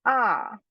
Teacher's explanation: the position of pronunciation remains at the low back side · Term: pure vowel